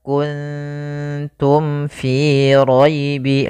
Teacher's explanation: Maka mim itu kan rapat ma. Maka di sini harus jelas suara mimnya tidak boleh ditahan. Maka kuntum fi gaibi langsung. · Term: izhar syafawi